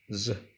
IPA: z